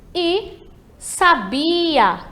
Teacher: Entre o sa e o a, temos a sílaba bi, que vai ser a tônica aí. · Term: sílaba tônica